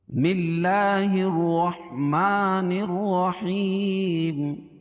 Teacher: نون کو ڈائریکٹ را میں ملائیں کیونکہ را پر تشدید ہے، اور رائے مشددہ کو 2 مرتبہ پڑھتے ہیں۔